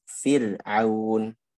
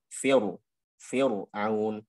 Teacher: Dan fitah. Maka dia dibaca dengan tarqiq ra-nya.